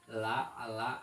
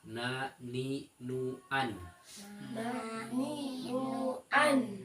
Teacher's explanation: Kalau la mah agak atas, kalau na mah agak dalam, agak bawah ya. Jadi enggak sama na sama la itu.